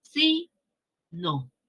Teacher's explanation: Sí tiene la mayor fuerza de voz y no la menor fuerza de voz.